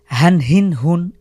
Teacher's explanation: এটা হলো ছোট হা বা আমাদের বুক থেকে উচ্চারিত হা, স্বাভাবিক হা।